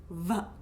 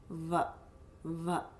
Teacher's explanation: So you can do it without, so much of this teeth action, but v, v. You really feel the lips vibrating.